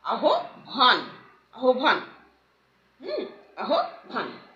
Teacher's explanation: হয়ের সঙ্গে ব যুক্ত হয়ে ব মহাপ্রাণ রূপে উচ্চারিত হচ্ছে